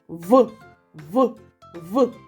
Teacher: ми вимовляємо цей звук нижня губа наближається до верхніх зубів видихаєме повітря проривається в щілинку між верхніми зубами і нижньою губою голосові зв'язки працюють а Чи можемо ми проспівати звук в Давайте · Сьогодні ми познайомимося зі звуком в коли ми вимовляємо цей звук нижня губа наближається до верхніх зубів видихаєме повітря проривається в щілинку між верхніми зубами і нижньою губою